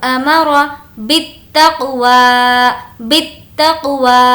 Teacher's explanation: واو کو کھینچیں گے کیونکہ اس کا کھڑا زبر ہے